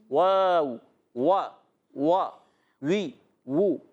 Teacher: واو وا وا وی وو، تو ادا ہوتا ہے ہونٹوں کی گولائی سے۔ یاد رکھنا ہے، حرکت ہے، حرکت کو بغیر کھینچے ادا کریں گے۔